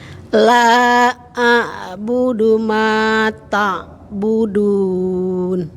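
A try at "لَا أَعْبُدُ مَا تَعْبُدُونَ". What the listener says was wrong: Sip, sudah Ibu. Barakallah.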